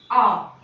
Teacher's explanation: आ एक ऐसा स्वर है जिसको बोलते समय हमारा पूरा मुख खुल जाता है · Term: विवृत स्वर